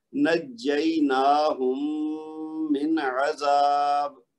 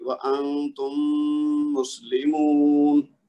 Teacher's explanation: یہ میم ساکن اور میم متحرک کا ادغام ہو گیا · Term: ادغام شفوی